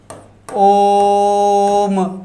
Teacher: तीन मात्राओं वाला प्लुत होता है। जैसे ओम आप बोलते हैं, ओम ऐसे बोलते हैं तो तीन मात्राएं होती।